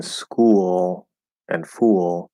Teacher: if the l is at the end of a syllable it's going to be the half l or the dark l